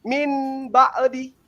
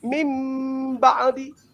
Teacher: Nun mati hilang menjadi ba, itu iklab.